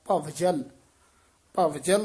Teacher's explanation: ਭਵਜਲ ਬਬ ਨਹੀਂ ਲਾਉਣਾ ਵਵ ਪੂਰਾ ਬੋਲਣਾ